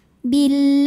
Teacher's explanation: bunyinya la Billahi Alif lamnya dinamakan dengan alif lam syamsiyah karena alif lam menghadapi huruf Syamsiyah yaitu lam maka alif lam tidak dibaca atau biasa disebut dengan Idam Syamsi Bill karena huruf lam berbaris